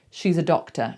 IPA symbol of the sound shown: ə